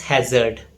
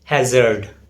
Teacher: In British English, it's pronounced as hazard without R sound. Whereas in American English, it is pronounced as hazard.